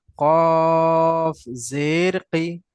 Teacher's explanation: আমি কফটা একটু টেনে বললাম না, জেরটা একটু টেনে জি বললাম